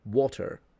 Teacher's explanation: to a speaker of the transatlantic accent even in the case of roticity they will pronounce the T and they will say water instead of water or water.